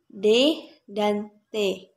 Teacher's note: huruf d dan t dihasilkan akibat pemblokiran oleh lidah saat menyentuh atap mulut